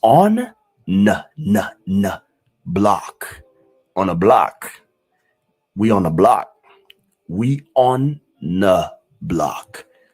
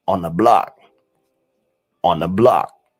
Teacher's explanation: But you barely hear the TH in the word the.